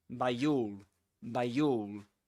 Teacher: you can link the word by to the next word with this sound with this y sound